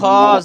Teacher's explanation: গলার মাঝখান থেকে, একদম কণ্ঠের গলার মাঝখান থেকে